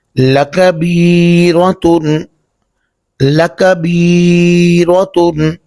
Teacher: یہ کاف جو ہے یہ باریک پڑھیں گے اور را کو اوپر پڑھیں گے چونکہ را کے اوپر زبر ہے۔